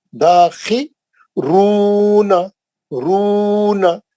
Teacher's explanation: खी एक ही जेर है, उसके बाद या नहीं है, दाखी रूना रूना, रू में मध्य असली है, क्यों, पेश के बाद वाव है, तो जहां मध्य असली है वहां दो हरकत पढ़ना।